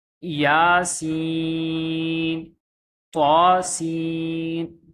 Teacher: کھڑا زبر کو دو حرکت کے برابر ہی کھینچنا ہے، زیادہ لمبا نہیں کرنا